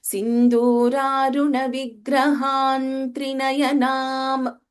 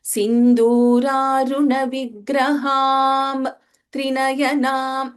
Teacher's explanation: when we are chanting together, that Anuswara will take the form of Na because the next letter is the Vyanjana, Trinayanam, the fifth letter of Tavarga.